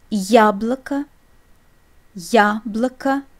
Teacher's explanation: you hear a distinct ya sound, a combination of y glide, y sound, and a.